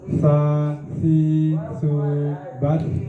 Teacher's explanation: Ujung lidah bertemu dengan ujung gigi seri yang atas. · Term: huruf sa